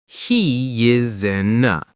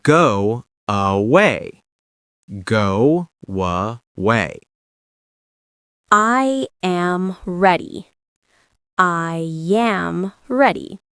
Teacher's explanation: When one word ends with a vowel and the next starts with a vowel, Americans add an extra sound: y, w. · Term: vowel to vowel linking